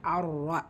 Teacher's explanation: இந்த இடத்துல ரா ஃபத்தா பெச்சு வந்திருக்கு. ஸோ ஹெவியாக ஓதணும், வல்லினப்படுத்தி ஓதணும். ரால ஷத்தா இருக்கனால அழுத்தம் கொடுக்கணும். இந்த இடத்துல ஷம்சியா, அதனால தான் லாமில் ஹரக்கத் இல்லை.